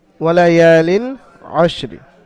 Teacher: তানমিনের পরে এখানে হরফে হালকি ছটি, হামজা হা আইন হা গইন খ, তো এখানে আইন এসছে তানমিনের পরে। লামকে বিনা গুন্নায় তাড়াতাড়ি পড়তে হবে